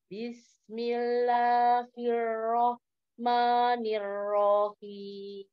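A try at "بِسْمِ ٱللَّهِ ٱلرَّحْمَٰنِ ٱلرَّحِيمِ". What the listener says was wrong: Masih agak naik. Hi-nya.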